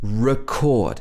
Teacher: when it's a verb the first e is a schwa